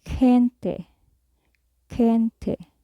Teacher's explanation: another way to pronounce G is like a gargled K when it is followed by the vowels EI, as in gente, gente, which means person, gente.